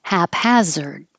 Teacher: both hap and has of the same vowel ah which you have to open a lot haphazard and haphazardly and we practice these that sound similar comb